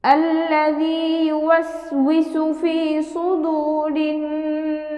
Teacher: মাদের হরফে বামে হরফে ওয়াকফ হওয়ার কারণে মাদ্দে আরজি হয়েছে, আমরা এখানে 3 আলিফ টান দিয়ে পড়ব